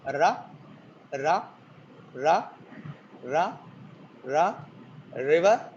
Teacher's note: r is an approximant or continuant in English, but in Telugu we have it as tap